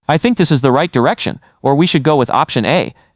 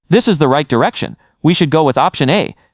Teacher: Instead of lifting your tone at the end, you let it fall. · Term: downward inflection